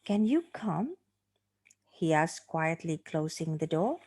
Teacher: So I hope you can notice the stress, the rising intonation, on the word come and the one on the word door. Yeah, so the word door, the rising there is slightly higher than the one on the preceding word on come.